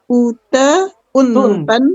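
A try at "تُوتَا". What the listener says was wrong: Tuta, bukan uta. Tuta. Tuntan. Tanwin.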